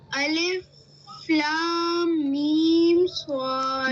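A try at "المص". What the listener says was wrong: بیٹے لمبا کیجئے، ایسے کام نہیں چلے گا. الف لام میم صاد.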